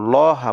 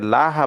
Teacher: এই লামটাকে আমরা মোটা করে পড়বো লহা পড়বো এটাকে লাহা পড়া যাবে না ইন্নাল্লাহা পড়া যাবে না আমরা অনেকে ভুলবশত না জানার কারণে এটাকে